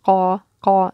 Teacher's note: when you say qa, you're closing your airway in your throat. So that's how you can remember it's stop.